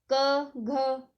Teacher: इसका उच्चारण स्थान कंठ है और यह क वर्ग के वर्ण है